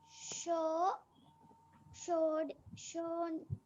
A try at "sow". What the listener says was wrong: It is not show beta, it is so. So